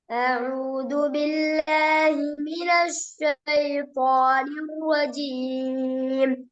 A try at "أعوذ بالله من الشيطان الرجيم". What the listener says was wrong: ஷேட மினஷ் أعوذ بالله من الشيطان الرجيم. ஷேட sound வருது இல்ல.